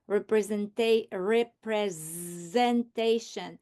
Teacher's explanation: I can hear that s sound as z